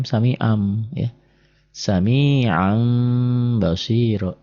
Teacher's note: Nah ini mim kecil. Nah jadi bunyi an kan n. Berubah jadi m. An-nya jadi am. Tapi bindeng sedikit. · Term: iklab